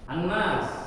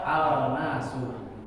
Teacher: Kalau ada tasdid maka lamnya nggak dibaca. Ya. Kalau nggak ada tasdid maka lamnya dibaca.